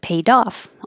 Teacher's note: the D will connect to the O and make a Duff